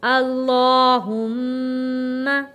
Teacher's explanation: میم کے اوپر تشدید ہے اس لیے ہم نے میم پر غنہ ادا کیا ہے